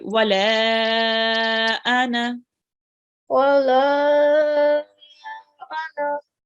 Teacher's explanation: with the ana, we won't be prolonging the noon. Okay, so it's just going to be ana.